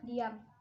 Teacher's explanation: Konsonan nasal bilabial bersuara yaitu M. Dibuat dengan kedua bibir dikatupkan, kemudian udara dilepas melalui rongga hidung